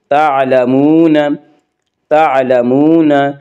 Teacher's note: واو مدہ کو 1 الف کے برابر کھینچ کر پڑھیں گے